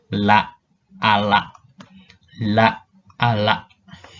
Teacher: L itu aproksiman lateral